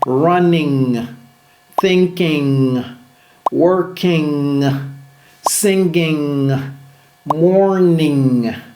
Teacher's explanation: En anglais, c'est un son nasal unique. La langue touche l'arrière du palais et le son sort par votre nez. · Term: le son ng